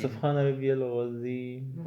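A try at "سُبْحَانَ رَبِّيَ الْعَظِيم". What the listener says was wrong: اگر تم نے کہا دعا کے ساتھ سبحان ربی العظیم پھر بھی غلط ہے. زال کے ساتھ پڑھ لے سبحان ربی العظیم پھر بھی غلط ہے. زوا ہے زوا. سبحان ربی العظیم. عظیم سی ذال کا مخرج ہے کہ نا.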